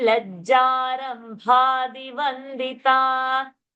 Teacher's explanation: Rambha, that bha is Mahaprana.